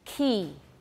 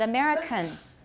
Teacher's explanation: So American, I do have aspiration, but not as much as for key. Key, I have a lot of aspiration, but American, I have some, not quite as much. Because it's less, I'm not going to put the H there.